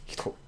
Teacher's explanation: the first syllable suffers from devoicing, meaning it's not hito, it's always hito.